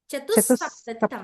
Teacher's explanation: సప్తతిహి లో విసర్గ చెప్పకూడదు మనం పక్కన కలిపేయాలి కదా